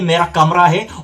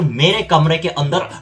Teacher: जिसका उच्चारण आ से समाप्त होता है, उसके पीछे परसर्ग आने पर आ का उच्चारण ह्रस्व हो जाता है और फिर ए में चेंज हो जाता है